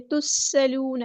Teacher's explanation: وَلَا تُسْأَلُونَ، الف مد آیا تو مد اصلی کریں گے، تُسْأَلُونَ، سین کی سٹی ہم واضح کریں گے، حمزہ کی آواز کو واضح ادا کریں گے ، تُسْأَلُونَ، ایسے نہیں، تُسْأَلُونَ، واو مد آیا تو مد اصلی